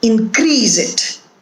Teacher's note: So here also, the stress in the first word is on in, first syllable, and when it is used the second time, it is used as a verb, and the syllable that is stressed is the second syllable, increase.